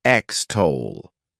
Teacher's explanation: this word has two syllables, and the stress is on that second syllable